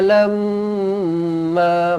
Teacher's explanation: Wa asarrun nadamata lamma, mim sabdu, dengungkan 2 harakat, rapatkan bibir. Wajibul gunnah di sini.